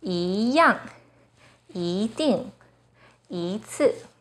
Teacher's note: When 一 is followed by a fourth tone, it changes to the second tone